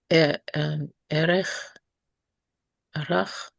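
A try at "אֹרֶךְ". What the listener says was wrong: You've got the root letters right. But what do we do with that short O vowel? Orech, exactly. So this is a seglet, an O or U flavored seglet, and so is rochbo.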